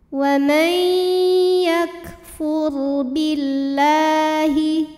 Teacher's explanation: Huruf ra sukun dibunyikan secara tafkhim sebab huruf sebelumnya berbaris dhammah. Maka cara bacanya ditebalkan.